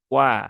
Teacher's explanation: dia letaknya di ujung bibir ya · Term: huruf wau